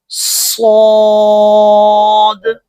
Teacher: زبان کی نوک جب اوپر اور نیچے کے اگلے دونوں دانتوں کے درمیان آ جائے اور سیٹی کی آواز پیدا ہوگی اور اس لفظ کو موٹا ادا کریں گے